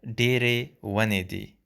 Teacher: pay attention to the dere sound, which is de, a retroflex de